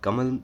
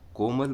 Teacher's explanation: कमल जब हम बोलते हैं तो कम समय लगता है हमें और जब हम कोमल बोलते हैं तो यह जो मात्रा है